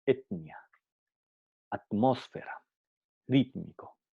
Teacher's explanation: La T solo pasa por las fases de implosión y oclusión, pero la explosión se pierde por la influencia de la consonante siguiente